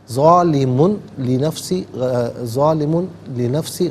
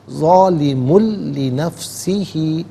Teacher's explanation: ظالمن میں میم پر دو پیش کی تنوین ہے، اسے لنفسی کی لام کے ساتھ ملائیں گے، لام کی آواز کو ادا کیا جائے گا۔ ظالمن لنفسی، ظالمن لنفسی غلط، ظالم لنفسی ہی، یہاں وقف کریں گے تو لنفسی پڑھیں گے۔